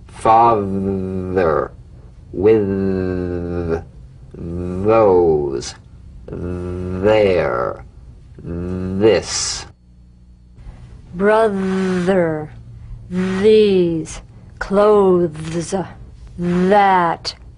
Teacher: The voiced tongue point to teeth fricative th the vibrant sound of the voice th has a quality much like that of the v. · Although this sound creates difficulty for many people when executed correctly the th is very easy. So slip the rim of the tongue between the teeth and sing feeling a buzz or vibration · So slip the rim of the tongue between the teeth and sing, feeling a buzz or vibration. Feel that vibration on the tongue outside the teeth. · Feel that vibration on the tongue outside the teeth. You've got to let the tip of the tongue stick outside the teeth and vibrate. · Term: voiced th